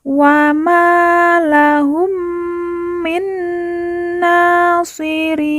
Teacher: huruf pemberhentian yaitu di sini huruf nun wahum Min Nasirin kemudian Nun di ujung kita matikan atau kita sukunkan karena tanda waakaf atau berhenti